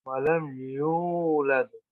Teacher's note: ولم یولد ایک الف کی مقدار لمبا کرنا ہوگا